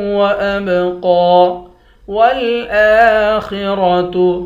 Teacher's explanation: حمزہ پر کھڑا زبر ہے، اس کو ایک الف کی مقدار کھینچ کر پڑھیں گے، خا اور را دونوں کو موٹا پڑھیں گے۔